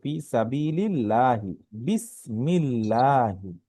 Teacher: জের যে এসে আল্লাহ শব্দকে ধরেছে, তাই এটি পাতলা হবে, মানে লা উচ্চারণ হবে ফি সাবিলিল্লাহি, বিসমিল্লাহি।